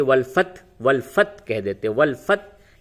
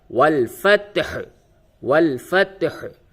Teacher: ہا کی آواز پوری نکلنی ہے